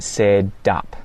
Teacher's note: the T gets hit with a flap instead of a well-enunciated T sound, and it sounds a little bit more like a D. So you're going to hear said up, and this is what my tongue's doing.